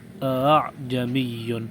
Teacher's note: اس کے دوسرے حمزے کو کچھ نرمی کے ساتھ پڑھیں گے، پہلے حمزے کی طرح سختی کے ساتھ نہیں پڑھیں گے، اس کو پڑھیں گے اعجمی۔ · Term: حمزہ کی تسہیل